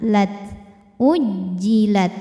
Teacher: syiddahnya dulu yang keluar suara kuatnya keluar ujjilat baru anginnya belakangan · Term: sifat syiddahnya